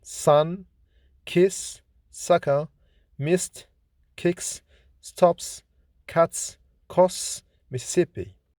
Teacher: S is voiceless, fortis, alveolar, fricative consonant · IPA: /s/